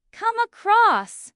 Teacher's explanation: The stress is usually on across in both meanings.